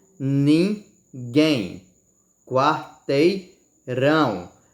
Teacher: a sua sílaba tônica vem sempre no final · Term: oxítonas